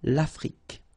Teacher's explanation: Final E, it's only the K at the end that you will hear.